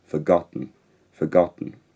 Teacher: central vowel affronted slightly so instead of a we have a the short vowel in forgotten is very interesting that is very very unrounded and I transcribe it narrowly using the unrounded character forgotten forgotten